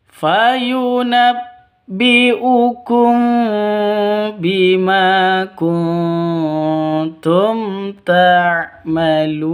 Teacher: kumbi mim mati bertemu dengan ba. Cara bacanya dengung.